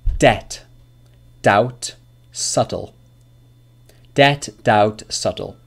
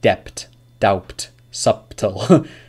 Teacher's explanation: the B sound is not pronounced in any of these words